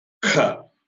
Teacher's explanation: when you utter the next letter Kha, you will find more amount of air comes out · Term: hard aspirate